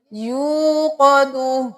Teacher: واو مدہ ہے تو 1 الف کے برابر کھینچیں گے